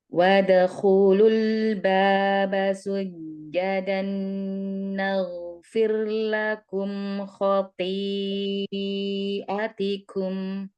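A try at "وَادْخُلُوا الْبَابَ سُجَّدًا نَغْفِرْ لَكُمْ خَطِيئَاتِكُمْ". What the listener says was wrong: Atikum, ada mad tobi'i ya.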